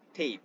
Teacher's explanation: And for the long vowels like a, as in tape, the tongue moves from a higher, more frontal position to a more open mid position. The lips lack a circular shape.